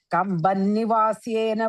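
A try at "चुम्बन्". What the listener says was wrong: Second line after the comma is chumban, chu sound, chumban nivasyan.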